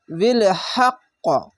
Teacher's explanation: কেন কলকলা হচ্ছে ধাক্কা মেরে উপর দিকে এই সাউন্ডটা যাবে